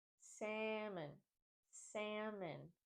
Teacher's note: To correctly pronounce the word, think of dropping the L. We don't want to pronounce the L. By doing this, we also change the sound of the letter A in this word.